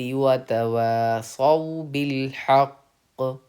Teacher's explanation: تختی نمبر 26 میں رول کے اکارڈنگ جب آیت کے بیچ میں سانس توڑیں تو اس کلمے کے آخری حرف کو ساکن کر کے سانس توڑیں. تو ہم نے قاف کو ساکن کر دیا، سانس توڑ دی